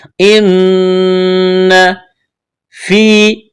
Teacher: یہاں نون ہے، نون کے اوپر تشدید ہے، تو غنہ کریں گے، آواز ناک میں چھپائیں گے